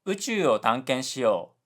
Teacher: uchu, which has a high low low pitch pattern